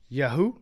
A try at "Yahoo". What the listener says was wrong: most most people put the emphasis on the first syllable